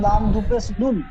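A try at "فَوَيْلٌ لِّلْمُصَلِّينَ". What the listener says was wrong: লাম লাম দুপেশ লুল পড়লেন, তারপরে লাম লাম সের লিল হবে।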